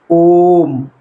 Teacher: तीन गुना समय लग रहा है इसके उच्चारण में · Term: पुलत स्वर